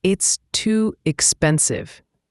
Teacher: Too has a long oo sound, like in moon. And expensive has the stress on the second syllable.